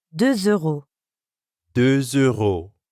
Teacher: De is actually spelled with a silent letter X at the end. But when we add a vowel sound after it, like in euro, we end up with a liaison that has a Z sound.